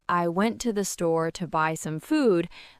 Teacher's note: the stressed words are went, store, buy, and food